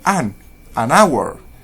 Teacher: Por ejemplo, si la H es una H muda, como en el ejemplo 3, que se pronuncia our, entonces la tratamos como una vocal, ya que la H en este caso no tiene sonido